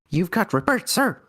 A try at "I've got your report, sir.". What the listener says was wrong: The first time you said it, it sounded like you got your birth, sir.